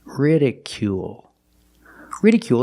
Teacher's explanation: make the long oo sound plus the dark L at the end of the word